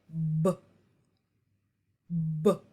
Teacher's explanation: make the um the sound for B say it b b you should be able to hear that burst of air as that consonant is coming to a stop · can't be continuously held rather the air flow comes to a halt and is then released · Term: stop sounds